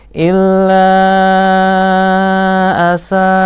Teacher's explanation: Illa, la panjang, mat tabi'i bertemu dengan alif, bacaan mat jaiz munfasil, dibaca panjang 5 harokat